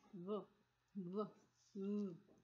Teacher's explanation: This is a lot of vibration I can feel in my throat when I'm pronouncing this V sound. V. This it means it's a voice sound.